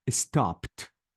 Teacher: I changed the E to T and I deleted the E sound